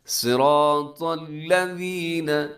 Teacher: صاد موٹا ہے، را موٹا ہے، طا موٹا ہے